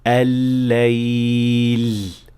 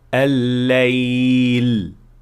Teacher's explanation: سیٹی والا لام زبان کے کسی ایک طرف سے لام پیدا کرنے سے ہوتا ہے، اور جب ایسا ہوتا ہے تو مخرج اپنی ضرورت سے زیادہ تنگ ہو جاتا ہے، جس کی وجہ سے لام کی آواز کے ساتھ ایک مدھم سی سیٹی کی آواز باہر نکلتی ہے